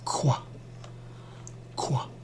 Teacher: from a regular Q into a rounded Q. So it becomes Q qua.